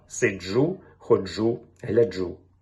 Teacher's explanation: маємо виразно африкату Дж у словах сиджу ходжу гляжу